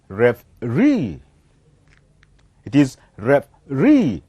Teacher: So the last syllable, it is the one that will be heard louder comparing to the other. And so we call this as a stressed syllable.